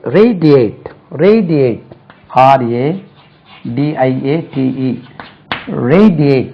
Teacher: Stress lies on the first syllable.